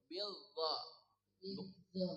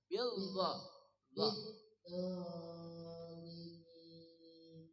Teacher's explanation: Bukan za, Bu. Dha ujung lidah bersama ujung gigi di atas.